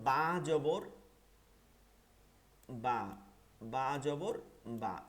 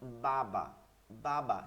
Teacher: বা দুইটা জবর পড়তে যতটুক সময় লাগে এইটা হচ্ছে এক আলিফ এইটা হচ্ছে এক আলিফ যেমন বাবা বাবা স্বাভাবিক দুইটা হরকত দ্রুত